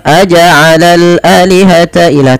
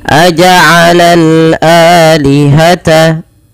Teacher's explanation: Dipanjangkan 2 harokat karena ia mad badal, adanya hamzah bertemu dengan alif